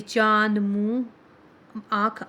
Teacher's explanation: अनुनासिक, इसका उच्चारण नाक और मुंह दोनों से होता है। इसको चंद्र बिंदु भी कहते हैं।